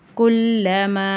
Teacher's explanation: குல்லமால மீம் மேல அலிஃப் மேல சின்ன மத் இருக்கு மூணுல இருந்து நாலு அலிஃப் வரைக்கும் நீட்டி ஓதணும்